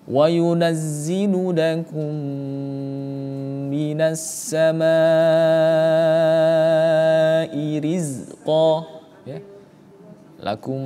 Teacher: Salah satunya ini adalah ketika ketika kita membaca mim mati bertemu dengan huruf mim, maka hukumnya adalah idgham. Idgham mimi dan cara membacanya harus dengan dengung ya. Kadar baca dengung itu 1 setengah alif atau tiga harakat tiga harakat.